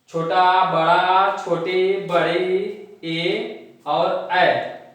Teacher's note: हमारा जो ओठ की आकृति होती है वह गोलाकार नहीं होती है, यानी वृत्ताकार नहीं होती है। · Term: आवृत मुखी स्वर